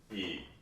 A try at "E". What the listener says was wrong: Right, tall. Wide. It feels too wide. So just say it very, instead of sort of giving me sort of a pronounced E like a singer, just more matter-of-factly E. So we're not looking for this. E. We're looking for E. E. What I'm getting when I watch you sing is E. E. You don't need it.